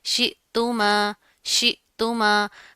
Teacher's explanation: حمزہ کے اوپر جزم آ رہی ہے، جھٹکا دے کر پڑھیں گے